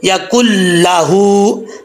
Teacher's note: ہا کے اوپر الٹا پیش ہے، سٹینڈ پیش، اس کو لمبا کر کے پڑھیں گے ایک الف کی مقدار